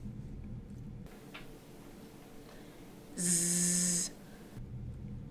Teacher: Z is made using the alveolar ridge and the tongue. The tongue touches the roof of the mouth. It is a fricative sound and is voiced. The vocal cords vibrate.